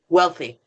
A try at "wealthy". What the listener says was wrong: You said healthy. Wealthy.